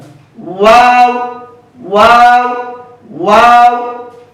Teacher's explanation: দুই ঠোঁট গোল করে সামান্য ফাঁকা রেখে ওয়াও হরফটি উচ্চারিত হয়।